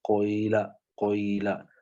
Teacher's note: مؤخر ہوتا ہے اور کثیر ہوتا ہے، جیسے قویلا قویلا، تو ضمہ جو ہے وہ تھوڑا سا پڑھا جا رہا ہے اور پہلے پڑھا جا رہا ہے، سٹارٹ جو ہے وہ ضمہ سے ہوتا ہے اور بعد میں کسرہ پڑھتے ہیں · ضمہ کا ہوتا ہے، کچھ حصہ جو کسرہ کا ہوتا ہے، اس میں ضمہ کا جز مقدم ہوتا ہے اور قلیل ہوتا ہے، جبکہ کسرہ کا جز مؤخر ہوتا ہے اور کثیر ہوتا ہے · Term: اشمام